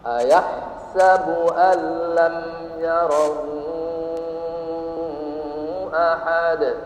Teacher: Dan karena bertemu dengan huruf selain mim dan ba, maka dibaca izhar, jelas, lam ya. Untuk mendapatkan mim yang jelas dibaca satu harokat. Tidak boleh dibaca alam yarah, bukan izhar lagi namanya. · mim sukun. Ketika diucapkan maka kedua bibir tidak bergerak. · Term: Izhar syafawi